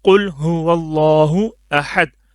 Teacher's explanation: قوف کو اچھے سے موٹا پڑھنا ہے، اکثر قوف کو کاف پڑھ لیتے ہیں، موٹا نہیں کرتے. اس کی وجہ سے بھی لفظ کی جو معنی ہے بالکل تبدیل ہو جاتا ہے.